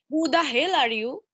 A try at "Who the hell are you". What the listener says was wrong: আচ্ছা শুনেন আপনি এত সুন্দর করে বললে হবে না তো আপনি তো তখন রেগে গেছেন তখন আপনাকে বলতে হবে